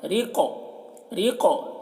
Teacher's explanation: قاف کو پر پڑھیں گے اور قاف میں قلقلہ کریں گے